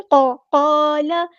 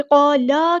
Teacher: لام کی زبر کو لمبا نہیں کرنا۔ زبر زیر پیش جن کو ہم حرکات کرتے ہیں ان کی بہت زیادہ امپورٹنس ہے، اگر آپ ان کو لمبا کر دیں گے تو میننگ چینج ہو جائے گا۔